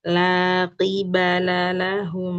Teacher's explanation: Qafnya ke belakang lagi.